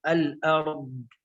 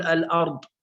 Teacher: الاستطالة هي امتداد المخرج من أول حافة اللسان إلى آخره، وحرفه الضاد، فنستطيل به يعني عندما ننطق بحرف الضاد يكون له مدا قليلا هكذا، الأرض، لا نقول الأرض بسرعة، لا، نعطيه صفة الاستطالة أي نجعله طويل قليلا هكذا.